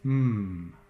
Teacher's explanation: There's a bilabial nasal, so just like we started off making our P, dam the sound with your lips, build up some pressure, and instead of blowing the pressure out to make a P, just let the air go up and out your nose